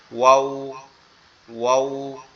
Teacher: দুই ঠোঁট একবারে সুন্দর করে গোল আকৃতি হয়ে যাবে